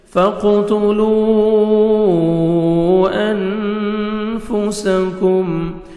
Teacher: یہاں پہ پھر مد جائز ہے. واو مدہ کے بعد نیکسٹ کلمہ کی سٹارٹنگ میں حمزہ آ رہا ہے، 3 سے 4 سیکنڈ آپ نے ایکسٹرا مد کرنی ہے